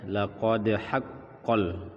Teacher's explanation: namanya Qolqolah Sugro atau Qalqalah kecil huruf yang memantul dibaca lakode haqqol dan langsung masuk ke ha yang dibaca terputus